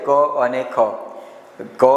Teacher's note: ખ જે છે એ અઘોષ વ્યંજન છે કારણ કે અહી કંપન ઓછું થાય છે